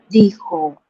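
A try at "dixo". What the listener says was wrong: la, la X se pronuncia sh.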